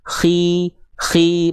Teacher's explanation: K ketika kasrah tetap tebal tapi kadarnya berkurang, enggak betul-betul tipis. Enggak jadi khi hi enggak khi tetap tebal. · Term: tafkhim nisbi